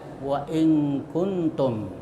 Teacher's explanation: nun mati bertemu dengan kaf dan nun mati bertemu dengan ta. Nah, ini hukum bacaannya disebut ikhfa. Ikfa itu artinya menyamarkan ya. · Ee ini cara membacanya itu ee suara nun di ee baca samar ya, tapi masih tetap terdengar samar di antara idhar dan idgam